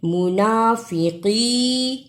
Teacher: منافقین، میم پیش مو، نون کھڑی زبر نا، فا زیر فی، قاف زیر یہ قی، اسے کی نہیں پڑھنا، قاف کو موٹا پڑھنا ہے